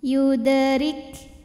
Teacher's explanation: ada di tengah bacaan dibacanya memantul dengan pantulan yang kecil yudrik huruf ro dibunyikan secara tarqik sebab berbaris di bawah maka bacanya tipis · Huruf ra dibunyikan secara tarqiq sebab berbaris di bawah, maka bacanya tipis. Yudrik. Ada angin keluar ya, ada hamas di kaf.